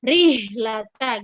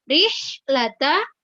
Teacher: Rihlata, kemudian hak sukun ya. Ketika hak sukun harus betul-betul hak yang tempat keluarnya di tenggorokan ya, di tenggorokan bagian tengah ya. Jangan diganti dengan tempat keluar di bagian bawah.